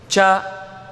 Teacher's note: ಹಲ್ಲಿನ ಮೇಲ್ಭಾಗಕ್ಕೆ ತಾಗಿಸಿ ಹೇಳುತ್ತೇವೆ